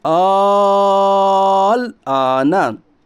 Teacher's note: मद्दे लाजिम कलमे मुखफ़फ़ को 5 अलिफ के बराबर खींच कर पढ़िए।